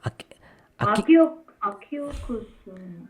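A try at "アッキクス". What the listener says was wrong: ಅಲ್ಲ ಒತ್ತಕ್ಷರ ಇದು ಅಕಿ ಅಕ್ಕಿ ಕುಸು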